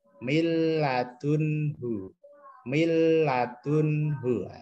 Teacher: Jelas ya, tidak dengung. Mil ditekan tapi dia nunnya hilang itu masuk ke lam. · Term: idgham bila gunnah